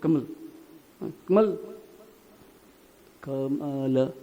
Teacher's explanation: हम जो अकारांत शब्द है ना बीच में आता है या आखिर में आता है उसको अधूरा बोलते हैं।